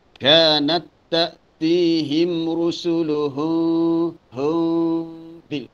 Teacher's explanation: Terus rusuluhum, ini kena dengung. Mim mati bertemu ba, dengung. Ini ikhfa syafawi.